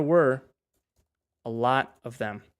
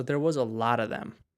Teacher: So it's v, of. But when we're saying things like lot of, we say lotta, right?